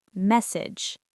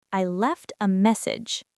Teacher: Stress the beginning. Short E like bed.